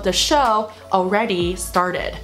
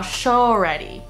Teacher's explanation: Show 后面是一个元音嘛 Already 它也是一个元音所以这两个中间呢就不能断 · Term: 连音